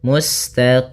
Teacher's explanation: Kemudian pada lafal qim di sini ada bacaan mad arid di sukun itu boleh kita panjangkan dua harakat, boleh empat harakat, boleh pula menjadi enam harakat